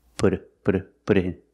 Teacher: the T input sounds like a fast D